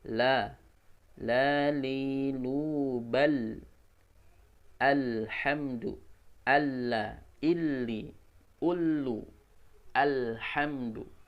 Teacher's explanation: lam dari ujung lidah yang bertemu dengan langit-langit